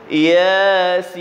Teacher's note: mana ya ni dua harakat. Sin enam harakat.